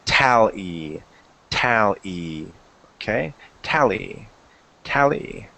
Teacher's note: It'll tell you where to stress the pronunciation. So there's 2 syllables, and we put the stress on the first one.